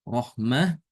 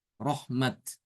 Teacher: Maka ada yang baca dengan ha ya ketika wakaf, rohmah, dan ada juga yang baca dengan tak sesuai dengan tulisannya, rohmat.